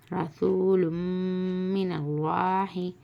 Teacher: زبر نل لام کھڑا زبر لا ہا زیر ہی من اللہ لفظ اللہ سے پہلے زبر ہے اس لیے اللہ کی لام کو موٹی پڑھیں گے